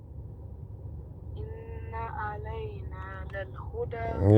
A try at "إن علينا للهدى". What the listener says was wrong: Yeah, but you gotta make sure you sound off in ayn.